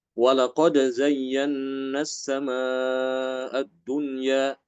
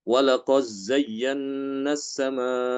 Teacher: Ya, huruf zai, maka Ibnu Dzakwan dia boleh idhar, boleh idgham